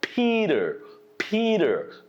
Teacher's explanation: Here's one more rule because T is following E vowel and before T there is another vowel. So there are 2 vowels before and after the T. So you pronounce it like a soft D sound